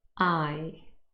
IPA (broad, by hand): aɪ